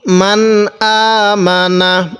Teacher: মিমের মধ্যে টান দিব না, হামজায়ের মধ্যে খারা জবরের কারণে এক আলিফ টান দিব।